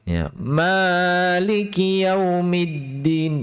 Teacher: 'Ma' ini adalah 'mad thobi'i'. Panjangnya sudah cukup untuk dua harakat, tidak perlu dipanjangkan lagi.